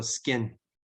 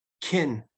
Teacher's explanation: After an S, it's unaspirated.